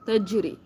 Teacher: تو تجری میں جیم قلقلہ کریں گے، تجری، تجری نہیں کہنا، تجری، ٹھیک ہے۔